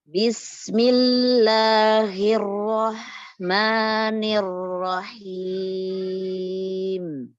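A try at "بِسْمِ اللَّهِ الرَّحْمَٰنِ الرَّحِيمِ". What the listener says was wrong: Yang pertama ada di huruf ro bertasydid yang awal ya. Kurang diberi sifat tawasudnya karena apa?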